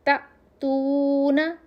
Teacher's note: تا الف کے اوپر جزم تھا اس لیے ہم اس کو تھوڑا سا جھٹکے کے ساتھ پڑھیں گے حمزہ کی آواز نکالنے کے لیے